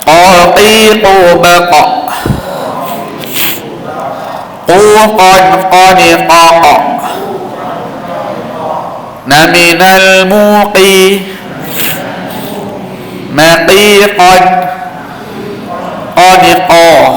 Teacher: Qa tu bunyi dia macam ayam lah, kita tahu bunyi qa. Daripada di kawasan anak tekak dengan anak lidah ni bunyi qa.